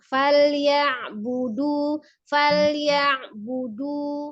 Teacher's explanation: Jadi ya-nya fathah, pendek ya, satu harokat, langsung bertemu dengan ain sukun. Jadi tidak dipanjangkan ya-nya, langsung disukunkan ke huruf ainnya.